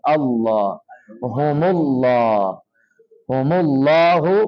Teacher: لفظ اللہ کا لام جو ہے وہ موٹا کر کے پڑھنا ہوتا ہے